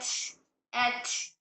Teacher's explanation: हम्स आने की वजह से हवा जारी हो रही है।